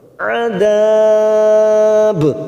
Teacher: La'ajjala lahumul masuk pada idhar qamariyah lahumul adab mat arid disukun 4 harokat kita panjangkan, ujungnya kita pantulkan karena ada huruf ba qalqalah kubra